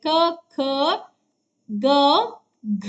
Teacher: ಕಂಠ ಭಾಗದಿಂದ ಹುಟ್ಟೋದ್ರಿಂದ ಅವುಗಳನ್ನ ಕಂಠ್ಯಾಕ್ಷರಗಳು ಅಂತ ಅಂತ ಕರೀತೀವಿ